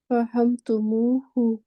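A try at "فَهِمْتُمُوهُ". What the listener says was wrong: फहिम, फहिम, फाहिम है ना, जो आइन कलमा है, आइन कलमा है, कसरा है, फाहिम, फाहिम तुम होता है ना,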